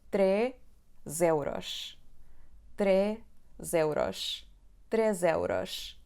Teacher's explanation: Mas quando a palavra que se segue começa com uma vogal, a letra S vai ter o som z, porque vai ficar entre duas vogais.